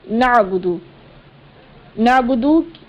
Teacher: نعبدو میں دال ہے، اس کی پیش کو بغیر کھینچے پڑھنا ہے